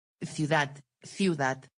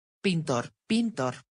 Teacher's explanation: palabras agudas, con la sílaba fuerte en última posición, terminan en una consonante diferente a n, s o vocal, no tienen acento gráfico.